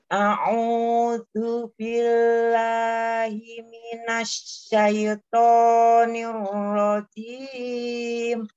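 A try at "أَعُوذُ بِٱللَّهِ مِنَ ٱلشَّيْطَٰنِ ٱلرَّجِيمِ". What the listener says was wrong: Pokoknya jangan terlalu panjang. Minasyaitoni.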